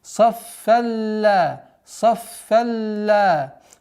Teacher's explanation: Валь маляикату саффалла. При слитном чтении и не обращаем внимания на тематическую остановку, у нас здесь правило идгам без назализации.